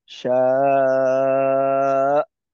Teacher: হামজা এখানে শক্ত করে ধরতে হবে যাতে হামজার অস্তিত্ব বোঝা যায়।